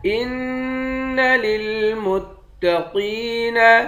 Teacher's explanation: حمزے کو نون مشدد کے ساتھ ملا کر یہاں غنہ کریں گے، قاف کو موٹا پڑھیں گے، قاف کو یا کے ساتھ ملا کر یا کو ایک الف کے مقدار کھینچ کر پڑھیں گے۔